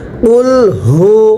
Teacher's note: কফটা উচ্চারণের সময় গলার মধ্যে একটু ধাক্কা দিয়ে পড়তে হবে